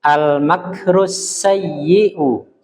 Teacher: Masih kurang tasydid pada huruf ya-nya